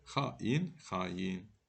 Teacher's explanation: bu iki saitin arasına bir y samiti artırılır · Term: Səs artımı